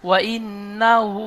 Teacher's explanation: ওয়া হাম ইন্নাহু আলা, ওয়া ইন্নাহু ওয়া বলে লম্বা করছেন, ওয়াও টান হবে না, ওয়াও জলদি পড়েন